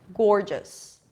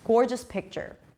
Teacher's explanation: Gore, or as in for, and then a J sound and an S.